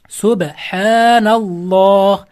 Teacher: Mana ikki, to'rt, olti harakat cho'zib o'qilsa bo'ladi. · Vasli hamza va Alloh lafzini birinchi lami o'qilmaydi. Keyin bu Alloh lafzi lo deb o'qilar ekan, la emas.